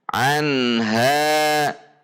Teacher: tidak ditahan karena ini izhar harus jelas pendek tidak dengung anha tidak juga dihentak karena Nun memiliki sifat bainiyah dan ghunnah meskipun sedang sukun tidak dihentak · maka nun sukun dibaca izhar atau jelas tidak ditahan karena ini izhar harus jelas pendek tidak dengung anha tidak juga dihentak karena Nun memiliki sifat bainiyah dan ghunnah